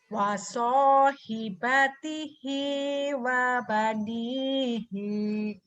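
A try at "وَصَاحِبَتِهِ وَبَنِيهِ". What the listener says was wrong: Ya, salah ujungnya panjang. Wa sahibatihi wa banihi. Ya.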